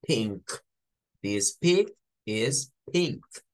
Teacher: esa peculiaridad del color rosado en inglés que la n suena a ng